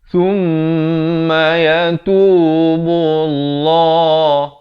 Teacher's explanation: Lafz jalalah di sini dibaca tebal. Berbeza dengan lafaz isti'azah tadi kita baca nipis.